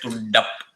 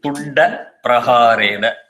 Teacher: You must be able to release the da and still continuously chant Praharena.